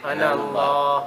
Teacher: Good, we didn't pronounce the alif.